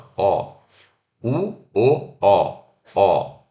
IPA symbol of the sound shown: ɔ